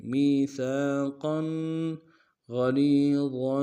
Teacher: سا کے سالف مدہ ایک مقدار میں کھینچیں گے. قاف کے اوپر تنوین ہے موٹا کریں گے